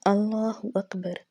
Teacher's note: اللہ اکبر، اللہ کے نام کو موٹا پڑھا جائے گا یعنی کہ پر پڑھا جائے گا، اور اکبر با پر ہم قلقلہ نہیں کریں گے کیونکہ آلریڈی اس کے اوپر زبر آ چکی ہے